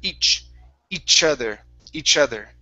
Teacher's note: give me a good TH sound. So instead of udder, it's other. Make sure your tongue is between your teeth. And here, instead of saying ish, this is a ch sound.